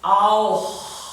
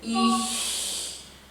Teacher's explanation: I have this down here because after the O, I think I wrote it down, yes it is, after the O and the A, the German h is a little bit further back, and after the E, for example, it's more forward.